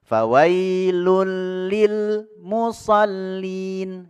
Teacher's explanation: dan ro ketika nun sukun atau tanwin bertemu lam dan ro maka dimasukkan nun sukun atau tanwinnya ke huruf lam atau ro tanpa digunahkan tanpa didengung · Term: idgham bila gunah